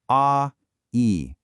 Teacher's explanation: I want you to begin with that open mouth position for a A. Now, without stopping the sound, move your tongue up and forward and spread your lips into that smile for e E. Now, let's connect them in a glide slowly.